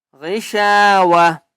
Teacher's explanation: اگر وقف کریں گے تو یہ تا جو ہے یہ ہا بن جائے گا